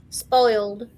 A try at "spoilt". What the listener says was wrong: Nope. See, you're saying spoiled. It was spoilt. The milk spoilt. I know, that was one of the other words I got in trouble for. They used to say spoiled.